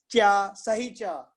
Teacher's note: हमारे ऊपर वाले दांतों के पीछे वाले हिस्से को पैलेट बोलते हैं। तो वहां जीभ टच करने का प्रयास करती है